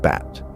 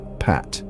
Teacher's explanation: even though B and P are both bilabial plosives they create different sounds because B is voiced while p is not